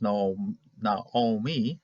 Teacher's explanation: Naomi, ahora nosotros en español dijimos Noemi, es decir, ocupan este Shabbat como un E. Ahora, el hebreo normalmente es Naomi, acento hacia al final